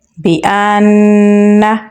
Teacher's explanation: حمزہ کو نون کے ساتھ ملائیں گے اور غنہ کریں گے بأن۔ را کو پر یعنی موٹا پڑھیں گے اور با کے ساتھ ملائیں گے کیونکہ با کے اوپر تشدید ہے۔